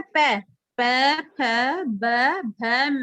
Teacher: देखो इनका उच्चारण करके अपने होठ मिलते हैं ना आपस में